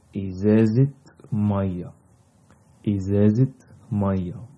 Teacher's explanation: And here what happens is like we have noun, we have two nouns, so the t marbuta in izeze, we open it, so it's become izezit maya